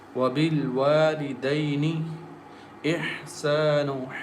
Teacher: Wow comes from lips, and ba also comes from lips.